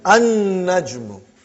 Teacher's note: he did not pronounce lam because noon is a sun letter